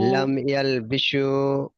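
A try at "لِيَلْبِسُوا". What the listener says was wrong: হ্যাঁ বিসু, সিন বলবেন, সিন মতন হয়ে যাচ্ছে।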